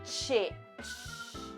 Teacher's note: Empezaríamos con una T, que es oclusiva, y luego nos quedaría la sh, que es fricativa. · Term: sonido africado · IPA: /tʃ/